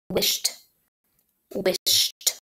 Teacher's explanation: I hear the t sound at the end of wished.